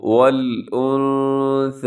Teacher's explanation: والانثى، یہاں اخفا ہوگا، نون ساکن میں آپ نے کیا کرنا ہے، آواز کو ناک میں چھپانا ہے